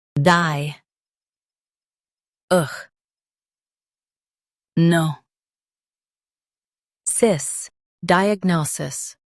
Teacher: Stress no and keep cis soft.